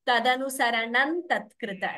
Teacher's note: Na is replacing the anuswara. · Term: sandhi